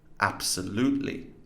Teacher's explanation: Assimilation, you're unlikely to get this as it can be very tricky to spot, but in absolutely, the B or B sound undergoes regressive assimilation to P by the presence of the following S, which is unvoiced, therefore devoices the B to P